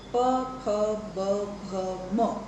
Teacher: એમાં હોઠનો ઉપયોગ હોઠથી ટકરાઈને હવા બહાર આવે છે. પણ આ બધામાંથી જે મ છે એ અનુનાસિક પણ છે, કારણ કે એમાં નાક દ્વારા મ, તો નાકની અવસ્થા આપણે ચોખ્ખી સમજી શકીએ છીએ કે એ નાકમાંથી હવા બહાર ફેંકાઈને મ બોલાય છે. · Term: ઓષ્ઠ્ય